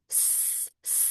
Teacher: Huruf sin itu sifatnya adalah rakah. Rakhaah itu mengalir. Huruf sin sifatnya rakha.